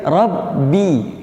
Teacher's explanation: usahakan kita membaca ba di sini jangan ditebalkan, ya, bukan rabbil, ya, bukan rabbi tapi rabbi, ya, harokatnya kasrah tipis, ya, rabbil, ya.